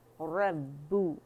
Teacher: فَأَمَّا الْإِنسَانُ إِذَا مَا ابْتَلَاهُ रब्बू, रा बा, रा मोटा है एंड बा बारीक है और मुशद्दद है